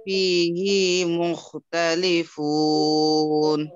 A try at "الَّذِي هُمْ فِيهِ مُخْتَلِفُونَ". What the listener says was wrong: কি বলে আপনার স্ট্রেস বা জোর দেওয়া যাবে না আল্লাযীহুম ফীহি মুখতালিফুন হি বলে যদি একটু আপনি ঠেলা দেন তাহলে এটা কি হয়ে যাবে? হি একালিপ মাদ্দা হয়ে যাবে। আল্লাযী হুম ফী মুখতালিফুন,